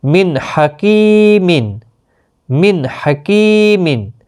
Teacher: نون ساکن کے بعد ہا آیا ہے، اس لیے اظہار ہوا، گنہ نہیں ہوگا۔